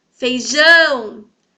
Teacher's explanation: O jão, então, é a sílaba tônica. E ele está na última posição.